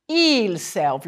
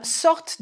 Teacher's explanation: the ent is silent but it makes you pronounce the final consonant